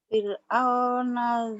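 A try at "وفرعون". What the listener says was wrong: wahnya ketinggalan Kak. Wafir. Jangan au. Wa fir'auna dzil.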